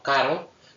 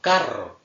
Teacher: tenemos dos fonemas distintos, la vibrante simple R y la vibrante múltiple R